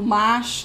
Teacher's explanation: esse traço do mas, né, que seria essa fricativa chiante que a gente diz